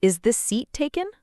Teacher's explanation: So the correct way is to lift your voice at the end.